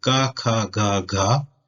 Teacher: So the first line, G, K, G, G, is pronounced at the back of your throat